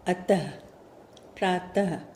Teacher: इसे बोलते समय अंत में ह की आवाज आती है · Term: विसर्ग